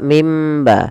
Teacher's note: bertemu dengan ba maka suara nunnya dimasukkan ke huruf ba atau dibalikkan sehingga terdengar dengan suara huruf mim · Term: hukum iqlab